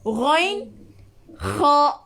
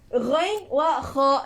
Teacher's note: Huruf kerongkong yang paling tinggi. Iaitu ghain wa kha. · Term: adnal halq